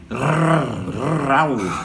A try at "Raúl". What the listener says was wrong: Mucha R, pero no pasa nada, no importa. Raúl, muy bien.